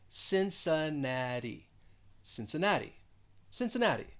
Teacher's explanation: both of those cs they're going to sound like an s that second syllable has the schwa since the third syllable stressed and that fourth syllable has the long e and also that · second syllable has the schwa since the third syllable stressed and that fourth syllable has the long e and also that final t it is a flap t